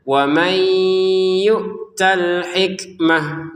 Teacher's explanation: Waman nun sukun bertemu ya. Nun sukun masukin ke ya dengan dengungan